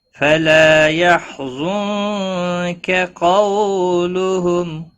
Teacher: لا يستطيعون نصرهم وهم لهم جند محضرون فلا يحزنك قولهم، فلا الف مدہ ہے، ایک الف کے برابر کھینچ کر پڑھیں گے۔ یحزنک نون ساکن کے بعد حروف اخفا کا کاف آیا ہے، اخفا حقیقی ہوگا، گنہ کے ساتھ پڑھیں گے · قاف حروف مستعلیہ میں سے ہے، پر پڑا جائے گا